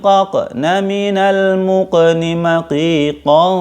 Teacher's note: dia termasuk huruf qalqalah, jadi dipantulkan ya ketika sukun